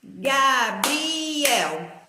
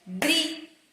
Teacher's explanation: O I e o E ficou separado, então é um hiato.